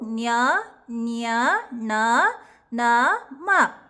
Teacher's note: ಅನುನಾಸಿಕಗಳು ಅಂದರೆ ಮೂಗಿನ ಸಹಾಯದಿಂದ ಉಚ್ಚರಿಸ್ತಕ್ಕಂತಹ ಅಕ್ಷರಗಳು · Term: ಅನುನಾಸಿಕ ಅಕ್ಷರಗಳು